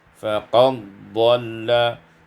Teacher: idghamud dal fi dhad, diidghamkan dal pada dhad menjadi faqad dhalla